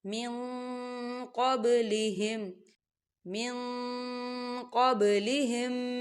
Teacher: قوف جو ہے اکفا کا ورڈ ہے، تو یہاں نون ساکن کی آواز کو ہم چھپائیں گے. کہاں چھپائیں گے؟ ناک میں چھپائیں گے